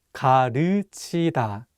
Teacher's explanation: this vowel 으 is much wider than the vowel 우